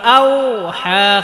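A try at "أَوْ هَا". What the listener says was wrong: এটাকে আও আও বলা যাবে না, আউ আউ। ঠোঁট একদম ঠোঁটের আগা থেকে উচ্চারণ করতে, ঠোঁট থেকে উচ্চারণ করতে হবে। আও আও বললে মুখের ভিতর থেকে উচ্চারণ হবে। আর ওয়াও এর মাখরাজ হচ্ছে ঠোঁট, দুই ঠোঁট হইতে ওয়াও বা মিম এই তিনটা হরফ উচ্চারিত। ওয়াও ওয়াও দুই ঠোঁট থেকে উচ্চারিত হয়।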